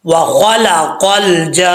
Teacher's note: اچھا جی، 5 سے 6 الف کی برابر اس کو لمبا کرنا ہے آپ نے۔ نون کے اوپر شد ہے، اس کو غنہ کریں گے